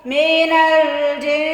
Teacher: تا کو ہم نے تو کہہ کے نہیں پڑھنا، پتلا پڑھنا